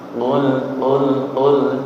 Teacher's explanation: Qul walaupun tidak nyeklok banget nggih, tapi usahakan dari pangkal lidah nggih. Qul tidak kul, bukan kul. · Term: qaf